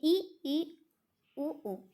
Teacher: समृद्ध स्वर, बिल्कुल मुख बंद रहता है, बिल्कुल सकरा होता है